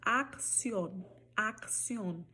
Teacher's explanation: Sempre que ela estiver duplicada, o primeiro C você vai colocar aí o som de K